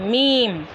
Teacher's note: दोनों होठों के खुश्क हिस्से से अदा होता है